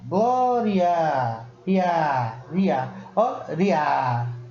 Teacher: O I quase não sai, ele sai juntinho do A para o A ficar mais forte. · começando com a semivogal e depois vindo uma vogal, eu estou começando de uma coisa mais fraca e estou indo para uma coisa mais forte. Então eu estou fazendo um percurso crescente.